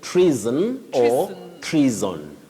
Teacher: What we should not use is the voiceless sound. The unvoiced sound s should not be used. That letter S takes the voiced sound Z.